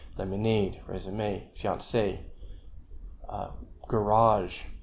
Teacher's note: a French stress pattern, which is stress on the last syllable